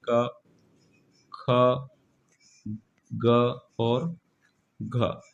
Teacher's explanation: कंठ से उच्चारित होने वाले जो वर्ण है वह है क ख ग और घ · याद रखिएगा क वर्ग के पांच वर्ण है और इन पांचों ही वर्ण का उच्चारण कंठ से होता है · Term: क वर्ग के वर्ण